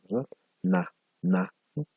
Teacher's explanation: dental de retina este es diseminar van a darse cuenta que la punta de su lengua pues hace contacto con la parte posterior de su diente superior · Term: nasal, nasal, na, dental